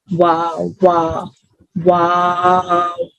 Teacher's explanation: کیسا ساؤنڈ نا، ڈبلیو کے ساؤنڈ کی طرح، واو واو واو. دونوں ہونٹوں کو گول کرنے سے ادا ہوگا یہ. پہلے تو دونوں ہونٹوں کو نا گول کر کے آپ کھولیں گے، واو، پھر واو پہ واپس آ کے رکیں گے.